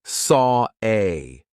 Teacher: The reason why we're doing an R here is because we have the or sound of saw and then an A. We have another open vowel sound. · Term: intrusive R